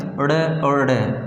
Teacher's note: जो हमारी जीभ है वो एकदम से हम फेंक के मारते हैं, यानी यूँ टकराती है एकदम से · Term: उत्क्षिप्त